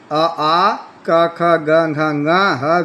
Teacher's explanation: अ कु है विसर्जनीय बस कंठ्या अ का मतलब है अ और आ कु का मतलब है क वर्ग क ख ग घ है का मतलब है और विसर्जनीय का मतलब है विसर्ग इनका उच्चारण स्थान कंठ से होता है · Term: कंठ स्थान